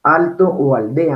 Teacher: Mire que la L está con la dentalización porque está antes de T y antes de D. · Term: lateral dental sonora